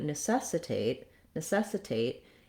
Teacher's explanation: we no longer use the flap there and we go back to using a true t sound